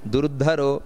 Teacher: ದುರ್ಧರೋ ಧ ಅನ್ನೋದು ಮಹಾಪ್ರಾಣ